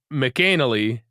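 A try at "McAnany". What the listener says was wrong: It's definitely not McAnally. Yes, yeah, there's not an L in that name.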